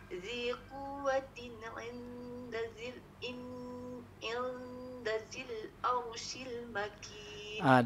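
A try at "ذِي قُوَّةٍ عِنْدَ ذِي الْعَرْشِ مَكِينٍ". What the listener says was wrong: Dia arshi tak ada shil. Shi makin.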